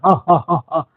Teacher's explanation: اس میں تھوڑی سی آواز بلند ہوگی اور سختی کے ساتھ نکالیں گے سینے سے ہا جیسے ہا ہا ہا ہا.